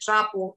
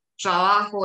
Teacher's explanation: Tenemos esa estructura silábica TR como una única consonante